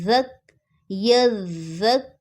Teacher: زال کو نرمی سے پڑھنا ہے، یہ زال سیٹی والی نہیں ہے